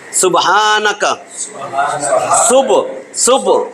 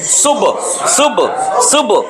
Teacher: একটা প্রতিধ্বনি হবে, ধাক্কা হবে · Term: কলকলা